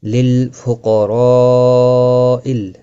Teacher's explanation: اعوذ باللہ من الشیطان الرجیم، بسم اللہ الرحمن الرحیم، للفقراء الذین احصروا فی سبیل اللہ لا يستطيعون ضربا فی الارض للفقراء، لام ساکن کو ہلانا نہیں، قاف مستعلیہ ہے، پر پڑھا جائے گا، را زبر کی وجہ سے پر پڑھا جائے گا، مد متصل ہے، 4 الف کے برابر کھینچ کر پڑھیں گے۔